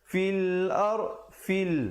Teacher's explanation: fa baris bawah bunyi fi. Bukan bunyi fe. Bila bunyi fi, bila datang lam jadi fil.